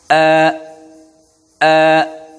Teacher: আমাদেরকে জানতে হবে হামজার মাখরাজ কি মাখরাজ হলো প্রথম নাম্বার মাখরাজ হলকের শুরু থেকে হামজা উচ্চারিত হয় হলকের শুরু হলো এই জায়গায় হলকের শুরু আমরা এই হলকের শুরু